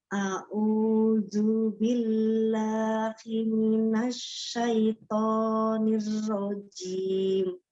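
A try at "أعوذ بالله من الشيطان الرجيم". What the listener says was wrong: Zu-nya hurufnya zal ya Umi. Ya, ujung lidahnya ada di ujung gigi seri atas, jadi bukan zu ya.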